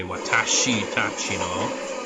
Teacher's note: You just skip that e in she.